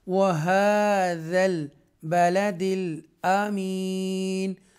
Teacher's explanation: یہ سٹینڈنگ فتح ہے، کھڑی زبر جسے کہتے ہیں، تھوڑا سا سٹریچ کر کے پڑھیں گے۔